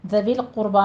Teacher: ذویل قربا میں ذویل نہیں کہنا ہے، ذا نرمی سے ادا کرنی ہے اور لام کے اوپر قلقلہ نہیں کرنا. آگے قربا میں قوف بھی مفخم پڑھی جائے گی اور را بھی.